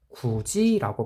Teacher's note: 즉 디귿이 지읒으로 발음되는 현상, 교체되는 현상, 그거를 구개음화 이렇게 이야기하는 겁니다.